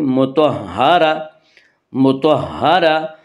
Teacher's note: مطہرہ، مطہرتن، آگے آیت ہے وقف کریں گے۔ گول تا وقف کی صورت میں ہائے ساکنہ بن جاتی ہے، اب مطہرتن سے اس کو پڑھیں گے مطہرہ، مطہرہ۔